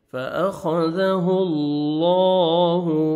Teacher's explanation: آپ نے لام کو پر کرنا ہے اور موٹا بھی کرنا ہے اور 1 سیکنڈ کھینچنا بھی ہے